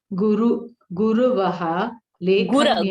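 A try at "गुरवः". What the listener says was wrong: Gura, not guru, gura.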